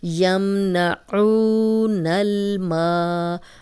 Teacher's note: میم زبر الف ما، اب یہ الف مدہ آ گیا، خالی الف پیچھے میم پہ زبر، 2 حرکات لمبا کریں گے